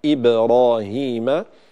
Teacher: كسر الهمزة بشكل جيد مع قلقلة الباء ساكنة